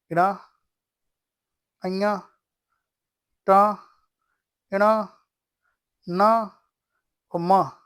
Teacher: नाक और मुह से उच्चारण होता है उनको हम क्या कहते हैं उनको हम अनुनासिक कहते हैं